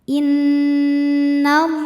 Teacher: Inna, ada hukum gunnah musyaddadah karena nunnya bertasydid. Cara bacanya dengung, bunyi n tahan sampai ada suara masuk hidung kurang lebih 2 harokat. Innallah. Lam pada lafaz Allah atau lam jalalah dibunyikan secara tafkhim sebab huruf sebelumnya berbaris fathah.